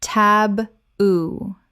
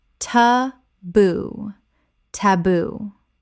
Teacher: Two syllables with the stress on the second.